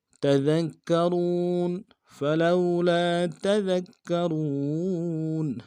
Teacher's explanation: کاف کے اوپر تشدید زور دیں گے، واو کو موٹا کرتے واو کے ساتھ ملائیں گے، واو مدہ ایک الف دال میں کھینچیں گے · کھینچیں گے، فلولا تذکرون، تا کو نم سے ادا کریں گے، دال کو باریک ادا کرنا ہے، آگے کاف کے ساتھ ملائیں گے